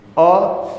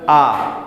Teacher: जैसे जैसे अ बोलिए, अ, तो अ बोलने पर थोड़ा सा खुल रहा है, आ पूरा खुल गया। तो अ बोलने पर थोड़ा सा खुल रहा है मुंह, और आ बोलने पर पूरा खुल जा रहा है।